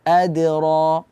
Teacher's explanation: tidak sampai ada Hamzah di situ Jadi cukup dipantulkan saja wama ro itu huruf mm sifatnya tebal di sini karena dia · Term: Qalqalah